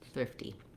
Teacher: first syllable stress long on the thrift and then a little short light d